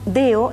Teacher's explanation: nos comemos o no hacemos fricativos los sonidos intermedios